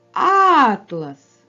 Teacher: наголос падає на перший звук а він є наголошеним